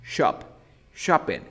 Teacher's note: Tienes que hacer como tu boca de O, pero dices la A.